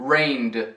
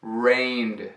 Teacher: A segunda pronúncia é o som de D sem sílaba extra.